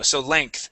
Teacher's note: instead of saying length, and pronouncing that G and an E, we say length, more like an ANKTH